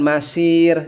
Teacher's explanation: ra-nya tipis karena sebelumnya kasrah